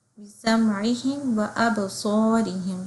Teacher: زبان کی نوک نیچے کے سامنے کے 2 دانتوں کے نیچے لگے گی تو صاد ادا ہوگا، اور اس میں ہماری آواز چلے گی، اور اس کے ساتھ آواز کو تھوڑا جمع کریں گے تو صاد ہے. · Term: صاد کا مخرج